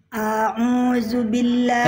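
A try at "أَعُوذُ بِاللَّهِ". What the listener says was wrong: Kepanjangan Bunda, kepanjangan hamzahnya, kepanjangan hamzahnya. A'udzu. Kepanjangan masih a'udzu.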